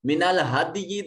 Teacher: دال ساکن ہے, یہاں قلقلہ واجب ہوگا